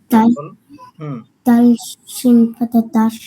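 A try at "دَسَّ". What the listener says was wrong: Is it shin? Is it shin?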